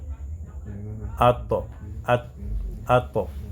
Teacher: Quand tu dis ato, il y a l'appui là-bas, extrémité de la langue, en appui sur la racine des incisives